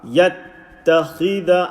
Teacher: Yattakhida and the kha with the kasra. Kha is a full mouth letter. Try to say as full as possible.